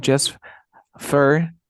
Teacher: cuando la t se encuentra entre dos sonidos de consonantes se omite